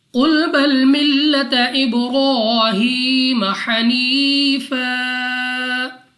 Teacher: با ہمارے پاس قلقلہ میں سے ہے، تو جب ہم ادا کریں گے ہمارے مخرج میں جنبش سی ہوگی، یعنی ہمیں اپنی آواز واپس سنائی دے گی